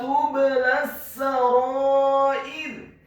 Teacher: huruf ta-nya dibaca tipis, tarqiq, dhamma satu harokat